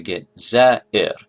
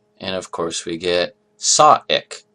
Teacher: we turn this root letter into a hamza